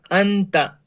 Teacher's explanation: اخفاء کے نون کو ناک میں چھپا کر یعنی ناک میں پڑھنا ہے